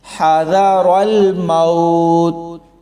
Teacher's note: اب اسی آیت میں آگے والا وقف دیکھیں، موت، حذر الموت، یہاں کلکلا نہیں ہو رہا، یعنی موت، موت، ایسے نہیں پڑھا جا رہا، بلکہ بہت آرام سے صرف تا کی آواز نکال کر وقف کیا گیا ہے